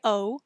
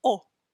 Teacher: little bit of a w sound at the end oh oh so my lips are kind of coming together at the end to make that w sound